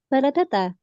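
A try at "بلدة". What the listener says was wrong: Bel ya. Beldah. Beldah. Diketikkan balada nanti akan muncul ba lam da tak marbutoh ya. Di situ lamnya di sukun.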